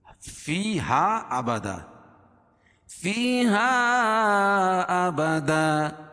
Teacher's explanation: یا ساکن سے پہلے زیر ہے تو یا مدہ اس کو ایک الف کے برابر کھینچ کے پڑھیں گے